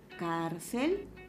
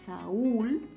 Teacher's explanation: la palabra saúl presenta la mayor fuerza de voz en la última